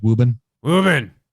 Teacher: you can kind of subtly drop the R most of the way